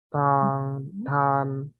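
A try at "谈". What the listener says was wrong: itu masih satu. tan, nada 2 ikutin saya ya.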